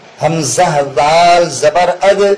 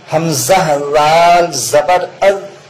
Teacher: دال تو بہت نرم ادا ہونا چاہیے اور بغیر قلقلہ کے